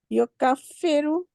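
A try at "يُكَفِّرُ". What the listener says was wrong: युकफ्फिरु जब आप बोलेंगी ना तो इसका मतलब है आपने वहां शद्दा लगा दिया, तो शद्दा तो इसमें है नहीं। कफरा का बनाना है ना आपने मुदारे, कफरा युकफिरु, युकफिरु।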